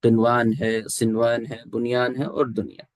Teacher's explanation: اس کے اندر آپ نون کو ظاہر کر کے پڑھیں گے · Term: اظہار مطلق